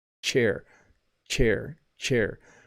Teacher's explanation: With chair, my tongue is actually right against the roof of my mouth behind my teeth.